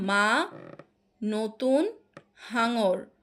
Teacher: যে ব্যঞ্জন ধ্বনি উচ্চারণের সময় ফুসফুস থেকে আসা বাতাস মুখের মধ্যে প্রথমে বাধা পায় তারপরে সেটা নাক এবং মুখ দিয়ে বেরিয়ে যায়। এবং এই ধ্বনিগুলোকে বলা হয় নাসিক্য ব্যঞ্জন।